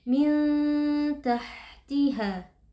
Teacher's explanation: Ada nun sukun yang bertemu dengan huruf ta, hukumnya adalah ikhfa hakiki. Nun sukun dibaca dengan samar dan berdengung. Tahtiha, pastikan huruf ha di situ mengalir nafas dan juga suara karena huruf ha bersifat hams dan juga rokhawah.